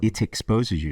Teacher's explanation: So he's putting the aspirated T in there, which is quite dental,